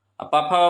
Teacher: पफा बोला जाता है ओष्ठ से।